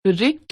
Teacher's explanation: र जमा इ के रूप में होने लगा है इस तरह हिंदी में रिक्त और ऋषि शब्दों की पहली ध्वनि के उच्चारण समान हो गए हैं